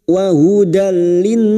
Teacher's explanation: yang bertemu dengan huruf lam dan huruf ro perhatikan gambar ini nun sukun atau tanwin yang bertemu dengan huruf lam dan ro masuk tanpa mendengung masuk pada huruf lam tanpa mendengung tanpa ditahan wa hudallin berikutnya